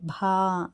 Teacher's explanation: భా అనేది మహాప్రాణ అక్షరము, గంభీరంగా పలకాలి